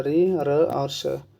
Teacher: ऋ र और षटकोण वाला स इसका जो उच्चारण स्थान होता है वो मूर्धन्य होता है